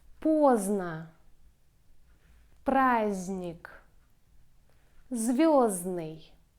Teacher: In combination z, d, n, we ignore d. We don't pronounce d.